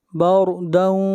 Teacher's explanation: را کو موٹا پڑھیں گے، را سے پہلے زبر ہے